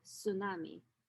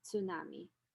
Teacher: cluster is not possible in native english language and so usually speakers of the language would drop the initial consonant